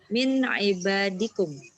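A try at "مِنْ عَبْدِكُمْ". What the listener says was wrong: Abdikum. Iya, kalau ibad tulisannya begini. Ibad. Ada alifnya. Baknya panjang. Ibad. Jamaknya, kalau ini semuanya tunggal, isim mufrad semua. Kalau ibad, jamak taksir.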